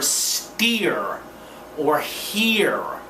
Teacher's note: tongue tip isn't touching anything sides of the tongue make contact with the side teeth tongue is retroflexed pulled back in the mouth and stiffened and actually the more you pull back the tongue in the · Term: r sound